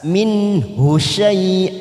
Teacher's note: nun sukun bertemu Haa idhar halqi kita baca jelas